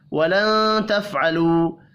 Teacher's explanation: واو مدہ کو ایک الف کے برابر کھینچ کر پڑھیں گے. ولن تفعلوا نون ساکن کے بعد تا ہے، اخفاء حقیقی ہوگا